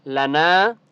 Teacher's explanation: نون کے آگے الف ہے، تو نون کو ہم نے ایک الف کی مقدار کھینچ کر پڑھنا ہے